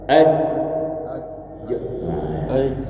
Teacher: ketika dia sukun dia menutup langit-langit menempel dan menutup langit-langit keras